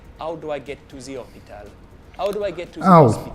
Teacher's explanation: So if you want to do a French accent, drop your H's.